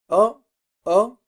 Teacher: como entre una A y una O. O, O, así abriendo a medias la boca